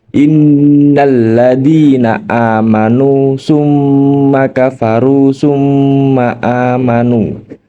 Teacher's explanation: kafaru tumma amanu terdapat Nun bertasdid dan mim bertasdid cara membacanya mendengungkan bacaan mim tasdid atau Nun tasdid sepanjang dua harakat atau dua ketukan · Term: gunah musyaddadah, gunnah musyaddadah